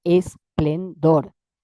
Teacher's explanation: Eh, bueno, ahí los recursos habituales son los que se conocen con el nombre de prótesis, aumentar el número de sílabas, en este caso agregando una vocal al principio